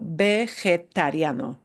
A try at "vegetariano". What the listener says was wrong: vegetariano. Because your English brain wants to associate vegetarian. So you got to cut out the j and put in a g, vegetariano.